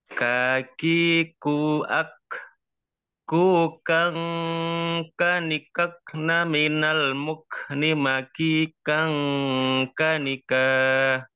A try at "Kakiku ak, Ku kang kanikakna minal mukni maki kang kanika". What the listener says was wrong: ya benar, Masya Allah.